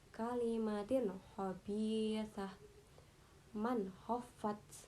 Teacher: bunyi nun sukun dan tanwinnya dibaca jelas, tidak boleh mendengung. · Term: idhar